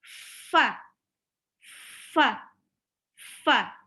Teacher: getaran dari bibir bawah dengan gigi seri atas